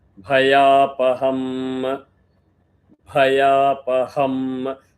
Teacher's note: Ha also is Mahaprana. So when you chant Ha, the air has to come from the Nabhi.